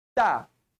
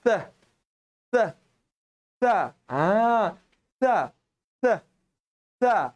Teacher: Huruf sa ni sifat dia kena keluarkan angin.